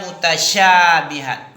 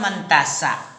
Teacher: menyebar dan meluasnya angin yang keluar di mulut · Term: tafasi